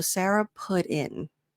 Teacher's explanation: we use the flap T that sounds like a D